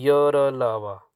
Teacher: अवरोध बहुत कम होता है वायु निकलने में और ध्वनि स्वर तथा व्यंजन के बीच लगती है। जैसे य, र, ऐसे लगता है जैसे स्वर है, कभी लगता है कि व्यंजन है। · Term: अंतस्थ